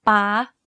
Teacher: You can hear that my pitch went high when saying this word. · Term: high tone